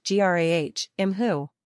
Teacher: Notice that the first word is actually two syllables even though it looks like it might be just one. Also note that the first syllable is stressed, rather than the second.